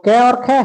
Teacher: जो क और ख है वह कंठ से उत्पन्न होते हैं